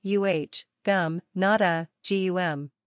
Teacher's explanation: the second syllable sounds very similar to the English word gum be sure to put the stress on the first syllable